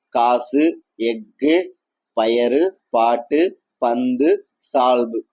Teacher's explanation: சொல்லின் முதலில் இடையிலே வரும்பொழுது முழுமையா ஒலிக்கிறது. சொல்லின் இறுதியில் வரும்பொழுது ஒரு மாத்திரைக்கு பதிலாக அரை மாத்திரை அளவே ஒலிக்கிறது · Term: குற்றியல் உகரம்